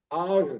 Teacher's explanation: intinya dia mengalir ketika disukunkan. Setelah mengalir, nggak memantul. Jadi jangan sampai mardu.